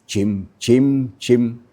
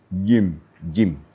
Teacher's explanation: tidak boleh kita baca jim dengan ada hembusan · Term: huruf jahar